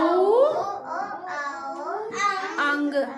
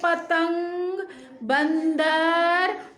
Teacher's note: ये अंग जो है नाक से इसमें आवाज आती है, इसलिए इसको हम बोलते हैं अनुस्वार।